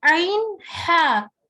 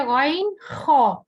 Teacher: تو ہا درمیان والے حلق سے ادا ہوتا ہے اور خو اوپر والے حلق سے